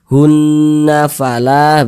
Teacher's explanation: itu kita tahan kita panjangkan sejenak ee Ajun Fala hunna Fala Nah hunnya itu kita tahan kita panjangkan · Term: ghunah musyaddadah